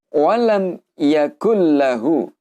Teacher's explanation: idhar syafawi, yaitu jelas di bibir. Kita baca seperti apa adanya, kemudian panjang harokatnya cukup dengan 1 harokat.